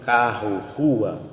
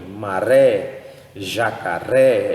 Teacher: pronúncia ele tem um som de R como em Maré jacaré é um som trêmulo que ele é feito na ponta da língua